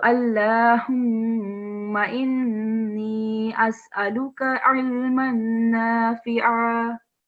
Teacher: So first of all, vertical fatha on lam. And then we have meme with shadda and we have noon with shadda. So we have to give a nasal sound.